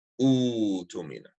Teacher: Hamzat al-Qata' is being turned into a waw. And Hamzat al-Wasl takes a dhamm.